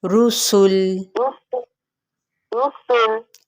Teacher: سین پہ سیٹی کو واضح کریں